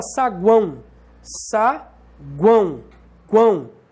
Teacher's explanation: Semivogal, vogal, semivogal. Temos um tritongo. Nesse caso é nasal, porque tem aqui uma marca de nasalização, que é o til.